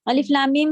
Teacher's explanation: بہت ہی سکون سے پڑھیں. 6 حرکت کھینچنا ہے اور بیچ میں میم کا غنہ بھی تھا